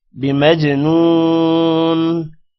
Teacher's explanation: جیم پر قلقلہ کریں گے، نون کے بعد واو ہے، تھوڑا سا لمبا کریں گے